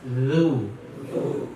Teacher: Baris depan lu. Nah, baris depan itu kata para ulama ada isyarat bibir dimajukan ke depan. Jadi bacanya a'udzu.